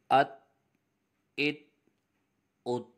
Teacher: ان میں ہم نے قلقلہ کرنا ہے، جنبش ہوگی جس کی وجہ سے آواز لوٹتی ہوئی آئے گی۔